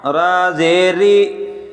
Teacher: را بریک پڑھا جائے گا کیونکہ اس کی زیر ہے۔ اگر زبر پیش ہوگا تو موٹا پڑھا جائے گا۔